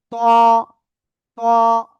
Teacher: ত মোটা আওয়াজে পড়তে হবে, সিম্পল আওয়াজ হলে হবে না, একেবারে সেই আকারে মোটা।